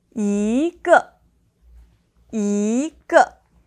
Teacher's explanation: So it becomes to the second and the fourth tone together. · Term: tone change